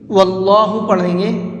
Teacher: واللہ یؤید بنصرہ من یشاء، یہاں پر اللہ کے لام کو پر کر کے پڑھیں گے۔ واللہ پڑھیں گے، واللہ نہیں پڑھیں گے، کیونکہ اللہ کے لام سے پہلے یہاں پر زبر ہے۔